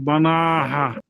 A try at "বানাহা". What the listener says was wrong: এখন টান হবে বানাহা।